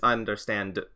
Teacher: So she'll say like I understand, but it's understand. I guess some people just will leave off the D